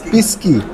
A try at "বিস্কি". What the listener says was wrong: বিস্কি, পরিষ্কার বি স পরিষ্কার বিস্কি।